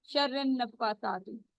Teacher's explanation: نون مشدد کے اوپر غنہ ہوتا ہے, وہاں پر آواز کو تھوڑی دیر روکتے ہیں ناک میں اور 2 کاؤنٹ اسٹریچ کرتے ہیں. ٹھیک ہے, 2 کاؤنٹ جتنے ہم یہاں پہ رکتے ہیں.